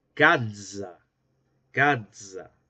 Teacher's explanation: Luego tenemos el africado sibilante alveolar sonoro. Tenemos acá su símbolo y en la escritura medieval se representaba por medio de la grafía de la Z, que sonaba algo así como una D y una S.